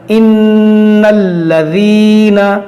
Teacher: لام سے پہلے زبر ہے اور لام پر بھی زبر ہے تو اس لام کو موٹا نہیں کریں گے